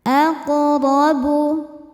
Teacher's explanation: Cara bacanya memantul dengan pantulan yang kecil. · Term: qalqalah sughra